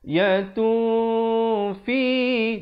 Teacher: Tetapi bila datang fa jadi ikhfa. Disembunyikan tanwinnya ataupun nun itu di belakang fa dengan kadar dua harakat.